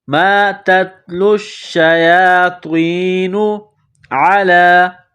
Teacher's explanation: گلے کے درمیان سے زور لگا کر عین کو نکالیں گے۔ لام کے اوپر کڑا زبر ہے، ایک الف کے لمٹ میں کھینچنا ہے۔